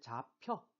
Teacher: 잡혀는 브하고 흐가 만났죠? 근데 잡혀, 프가 됐어요. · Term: 격음화